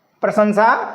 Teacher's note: एक शब्द आपका है प्रशंसा, प्रशंसा, इसमें दो सा हैं, प्रशंसा, इसमें दो सा हैं, प्रशंसा। पहला आपका जो है तालव्य सा, दूसरा आपका दंती सा।